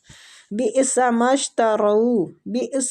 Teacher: حمزہ پہ جھٹکا دینا ہے